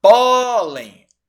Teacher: A sílaba tônica é a penúltima, pó. Então, pólen é uma paroxítona terminada em N de navio.